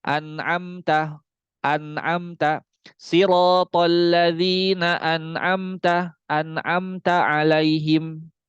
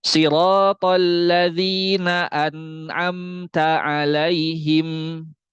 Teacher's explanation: rasakan suaranya itu memang benar-benar ngalir ke hidung. Ini kalau misalkan belum sampai ke hidung, gunnahnya belum sempurna.